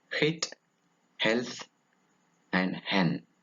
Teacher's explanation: It is a voiceless glottal fricative.